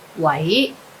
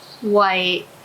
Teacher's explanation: the 喂 has to be in second tone when you answer the phone.